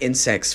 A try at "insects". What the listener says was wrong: you don't hit that second T. You're literally saying in the act of coitus.